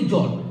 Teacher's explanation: জল শব্দটা আমরা এক ঝোঁকেই উচ্চারণ করে ফেলি, তাই এই একটা বার ঝোঁক দিচ্ছি বলে এই শব্দে একটি দল রয়েছে। কিন্তু যদি বলি আকাশ শব্দ, এই আকাশ শব্দটা উচ্চারণ করতে গিয়ে আমরা দুবার ঝোঁক দিই।